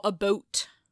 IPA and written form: əˈbʌut (about)